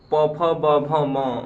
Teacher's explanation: प वर्ग पूरा ओठ से आता है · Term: ओठ वर्ण